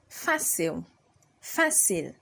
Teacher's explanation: So fácil has an accent on the a. Alright, so you raise your voice at the a.